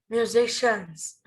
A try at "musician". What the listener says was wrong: No S. Musician, not musicians. Musician.